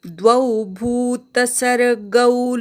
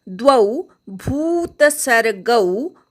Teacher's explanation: द्वौ दोन मात्रा आहेत, त्याचा उच्चार ऐकू येऊ देत. द्वौ भूतसर्गौ, भू दीर्घ आहे, इथे पण गवर दोन मात्रा आहेत, त्या ऐकू येऊ दे.